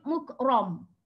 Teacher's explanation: Muk itu ada hamas ataupun angin. Ra sifatnya tebal, istilahnya ra tafkhim.